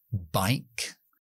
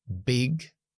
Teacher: juntamos los labios es oclusiva quiere decir que es una explosión y es Sonora con voz